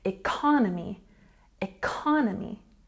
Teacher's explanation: economy has a stress on the second syllable